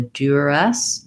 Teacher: You will hear in some places, East Coast, maybe Canada, a little bit more of a duress, with an oo, more of an oo quality to that letter U. But I think the easiest is duress, or duress.